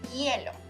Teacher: Remember, the H in Spanish is silent, so this word starts with the diphthongo.